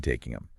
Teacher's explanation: And they pointed out how the G at the end of taking is barely there. And taking them almost blends into taking them.